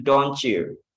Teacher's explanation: T plus Y itu pengucapannya C